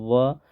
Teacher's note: व का जब उच्चारण कर रहा है तो होट सट तो रहा है लेकिन पूरी तरह से नहीं सट रहा है